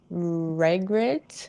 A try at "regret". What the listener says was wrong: Regret? But the stress syllable is gret, so regret.